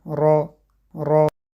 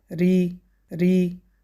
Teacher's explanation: Корень язык спускаем, читается мягко.